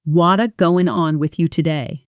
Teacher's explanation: What is going on with you today spoken slowly you hear every word clearly separated but in fast natural speech it becomes something closer to what going on with you today. The words what is collapse into wada almost like one word. This is called connected speech and it happens constantly in real conversation.